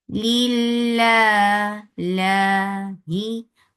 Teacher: lafz jilala will be light because there is kasra before it